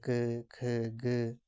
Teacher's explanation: जीभ के पिछले भाग से कोमल तालु का स्पर्श होता है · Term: कंठ व्यंजन